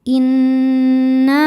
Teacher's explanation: cara bacanya berdengung tahan dengungannya kurang lebih dua harakat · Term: ghunah musyaddadah, gunnah musyaddadah